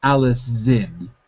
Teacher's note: I'm hearing an S. I want to hear a Z.